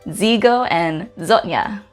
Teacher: when we're pronouncing Z the tongue pushes forward towards your teeth · Z makes more of a DZ sound as compared to just Z when we say the letter Z our teeth come together but